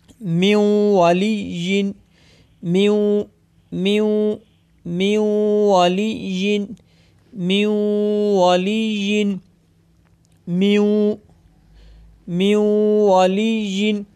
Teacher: इनमें से 4 हरूफ में से 4 लेटर्स ऐसे हैं जिनमें से गुन्ना करेंगे और 2 लेटर ऐसे हैं जिनमें गुन्ना नहीं करेंगे, यानी उन 4 हरूफ में से वाव आ गया। तो यहाँ पे हम गुन्ने के साथ पढ़ेंगे जिनकी मिकदार एक अलिफ यानी 2 हरकात के बराबर है।